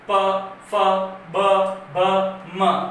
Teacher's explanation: होठ ओष्ठ जो है वो आपस में मिल रहे हैं